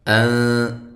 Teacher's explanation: یہ نون ساکن کا اخفا ہے، باریک